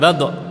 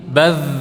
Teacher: Ketika sukun tidak memantul, bukan badh tapi baz. Ya, baz. Dia ini mirip dha ya, mirip dha tapi tebal.